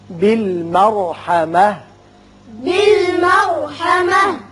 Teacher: रा पुर होगा, ता हिताइया साकिन होकर हा बन जाएगी।